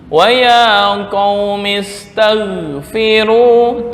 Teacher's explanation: Ghin jangan pantulan, jangan ada kolkolah, jangan dibaca tag. Nah, itu seolah-olah kolkolah.